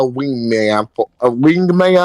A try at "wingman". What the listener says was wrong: You keep sounding like you're saying a ween man.